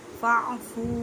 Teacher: واو ساکن سے پہلے پیش ہے واو مدہ کا قدا کریں مینس کہ ایک الف کی مقدار میں کھینچ کر پڑھیں. ایک الف کی مقدار کا اندازہ ایک انگلی کھولنے یا بند کرنے میں جتنا ٹائم لگتا ہے.